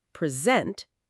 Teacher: But if you stress the second syllable, present, it is a verb to give something formally.